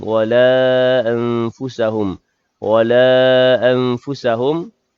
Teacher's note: panjang pada kalimah wala, hukum dia mad jaiz munfasil kerana 2 kalimah. Bacaan panjang sekadar 4 atau 5 harakat.